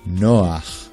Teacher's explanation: Ayin is one of the few letters that will show a patach vowel at the end of a word, Another such letter is chet, where first the a vowel is pronounced, and only then the ch sound